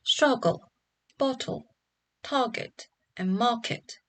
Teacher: the words like struggle, bottle, target, and market will have stress on the first syllable